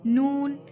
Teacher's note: नोक जबान और ऊपर के दरमियानी दांतों के मसोड़ों से एक हुरूफ नून निकलता है